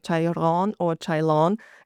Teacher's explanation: often when the L or the R is written at the end of a sentence, it actually turns into an N in the Thai language